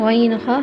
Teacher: یہ وہ والے حروف ہیں جو حلق سے ادا ہوتے ہیں، حلق کے نیچے حصے سے حمزہ ہا، عین ہا حلق کے درمیان والے حصے سے، غین ہا حلق کے اوپر والے حصے سے